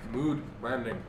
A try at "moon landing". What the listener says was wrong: The D is pronounced like an N.